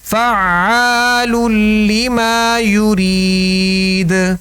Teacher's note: دونوں تشدیدوں کو احسن طریقے سے رک کر ادا کرنا ہے تاکہ دونوں ادا ہوں، تبھی حرف جو ہے وہ صحیح ادا ہوگا.